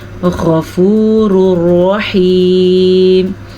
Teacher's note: غین کو پر پڑھنا ہے کیونکہ غین حروف مستعلیہ میں سے ہے · تنوین کے بعد لام یا را آ جائے، نون ساکن یا تنوین کے بعد لام یا را آ جائے تو پھر ہم نے دونوں کو آپس میں ملانا ہے، لیکن یہ بغیر غنے کے ملانا ہے. اس لیے یہ ادغام بلا غنہ ہے، یعنی کہ غنے کے بغیر ملانا، اور یہ ادغام بالغنہ ہے یعنی کہ غنے کے ساتھ ملانا.